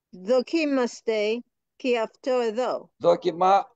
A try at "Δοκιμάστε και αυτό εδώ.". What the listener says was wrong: Δοκιμά. Προσέξτε το accent. Δοκιμάστε.